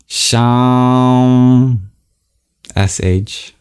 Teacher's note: We start with the regular palatal sibilant that we're familiar with in English.